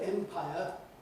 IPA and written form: ˈempaɪə (empire)